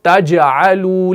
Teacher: जुबान का बीच वाला हिस्सा ऊपर वाले हार्ड पैलेट के साथ टच करेगा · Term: जीम